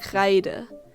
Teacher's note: The R in German is spoken with an open mouth while letting your tongue vibrate in the back of the mouth.